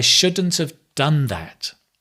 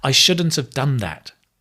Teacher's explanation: stress on the done